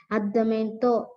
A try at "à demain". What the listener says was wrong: Addama. Addama. It's not addamanto. Addama. See the spelling M-A-I-N. Is there any T there? No. So it is addama.